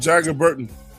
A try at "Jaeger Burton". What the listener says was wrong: It's Jaeger, not Jagger. It's Jaeger.